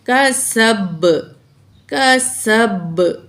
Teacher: ٹھیک ہے، کیونکہ آخری لفظ پر جب زبر زیر پیش ہو تو وہ ڈراپ ہو جاتے ہیں، آخری لفظ ساکن پڑھا جاتا ہے، تو یہاں با ساکن پڑھا جائے گا، اور با ساکن ہو تو اس میں قلقلہ ہوتا ہے، آواز ڈبل آتی ہے